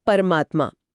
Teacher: यह परम और आत्मा से बना है। म का अ और आ मिलकर आ बन गए। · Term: दीर्घ स्वर संधि